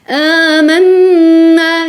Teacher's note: Parce que c'est un mad tabi'i, mad naturel. Amanna, noun mushaddada plus prolongation. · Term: ghunna complète